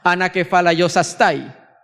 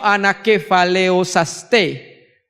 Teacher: Yo la pronuncio anakefaleosaste, porque en el griego koiné la A con la I es un diptongo y se suena E